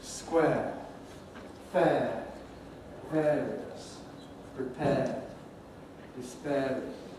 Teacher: the trend nowadays is more and more to pronounce it as a monophthong, as a long, steady air